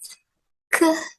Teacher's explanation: But the difference is at the back of the tongue is coming up and touching the velum, and that's where the air builds up